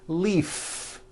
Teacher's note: If you stop the voicing at the end of the vowel E, then you would be saying leaf with an unvoiced F. And the word we're trying to say is leave with that voiced V.